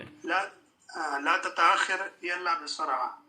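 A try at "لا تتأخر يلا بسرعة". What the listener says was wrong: आइन की आवाज लाजमी निकालेंगे।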